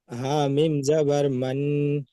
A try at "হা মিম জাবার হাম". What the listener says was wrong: হা মিম জাবার হাম। মিমটা উচ্চারণটা আগে আসছে কেন? আগে হাটা উচ্চারণ হবে, তাহলে হাটা আগে এসছে, তারপর মিম এসছে। তাহলে হা মিম জাবার হাম, আল হাম।